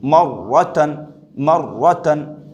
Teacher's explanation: رائے مشددہ کے بعد اس کے اوپر زبر لگا ہوا ہے، تو اس را کو بھی پر پڑھیں گے